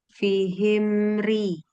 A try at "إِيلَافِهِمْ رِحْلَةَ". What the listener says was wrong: Ya, himnya belum setipis ri. Fihimri.